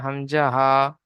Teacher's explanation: হলকের বা কণ্ঠনালীর শুরু হতে উচ্চারিত হয়